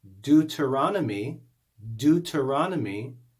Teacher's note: we have eu together in one syllable but both sounds are not heard that's really not a diphthong that's called a digraph because it's